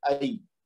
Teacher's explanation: आगे या साकिन से पहले जबर है, तो ये या लीन होगा, यानी आई पढ़ेंगे